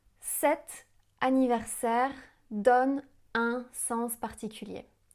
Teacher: Elle prononce même très bien le son [ʁ] qui est un peu plus difficile pour les anglophones souvent.